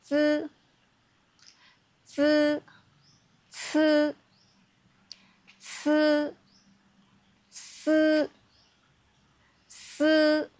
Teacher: These sounds are made with your tongue close to your teeth, but not curled back. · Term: Alveolar Frictives